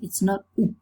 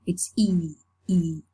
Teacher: the shape of the lips are spread with the corners of the lips moved away from each other, as when you are smiling. E, E. It's not rounded. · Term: FLEECE